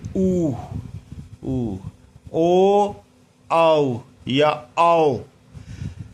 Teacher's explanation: आप जिनमें उच्चारण करते समय होठों की आकृति वर्त के समान होती है, यानी गोल होती है, तो वो वर्ताकार कहलाएंगे।